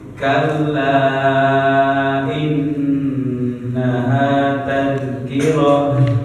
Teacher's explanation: kalau ta marbutoh ini ketika dia disukunkan dia menjadi ha